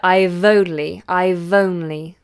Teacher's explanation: that V will go on to the next word, I've only, I've only.